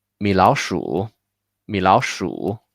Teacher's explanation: the three third tone sounds like sounds like a fourth tone, neutral tone, and then a third tone. So it's 米老鼠, 米老鼠.